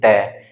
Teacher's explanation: हमारी जो जीवा का अगला हिस्सा है ना वो हमारे दांतों को टच करेगा और जब दांतों को टच करकर किसी वर्ण का उच्चारण किया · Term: दंत व्यंजन